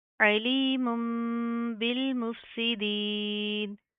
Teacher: इस बा की आवाज़ को हम इस मीम से बदल कर पढ़ देंगे